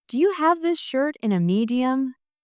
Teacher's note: Let's also work on the rhythm in Do you have this shirt in a medium? The stress is on have shirt and medium. So it sounds like do you have this shirt in a medium?